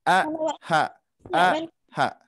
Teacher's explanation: tenggorokan bawah itu adalah huruf hamzah atau huruf alif dengan huruf ha